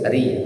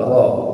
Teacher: Kalau baris bawah tipis, ri. Baris atas tebal, ro.